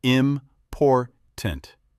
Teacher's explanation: Like in the word important, you stress the second part, important, not important. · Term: Word stress